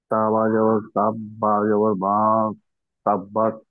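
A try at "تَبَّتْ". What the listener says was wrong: বা জবর বা হয় না, বা যে এই তাকে ধরছে, এই তার উপরে সাকিন না, এটা ডান দিকের হরকতের সাথে পড়ে যায়, বা তা জবর বাত, তাব্বাত।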